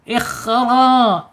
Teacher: kha, ya, ada di tenggorokan atas secara makhraj. Kemudian sifatnya ada di al-hams, ya, kemudian isti'la terangkat. Ikhra, ya, awas, ra-nya tidak boleh bergetar banyak-banyak, ya, karena dia mempunyai sifat inhirab, ya, bergetar dan condong.